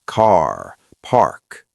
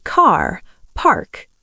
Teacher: Yes, your Rs are very strong. In London, we are softer. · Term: R sound